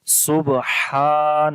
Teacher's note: تو جب الف سے پہلے زبر آئے تو وہاں پر الف کو لمبا کرتے ہیں، اس کو الف مدہ بولتے ہیں، تو اس وجہ سے یہاں پر لمبا کریں گے سبحان، اور ہا کی آواز گلے کے درمیان والے حصے سے ادا ہوگی